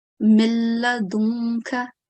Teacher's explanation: And that's why we are not going to do any nasal sound. We will merge, but we will not make any nasal sound. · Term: complete assimilation